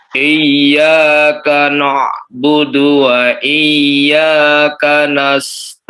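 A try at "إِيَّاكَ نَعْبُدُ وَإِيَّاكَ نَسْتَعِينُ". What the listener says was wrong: Baik, hati-hati dengan memasukkan nun ke ain ya. Iyyaka na'budu wa na'budu, hati-hati jangan sampai no ya, jangan sampai ditebalkan. Dibaca tipis.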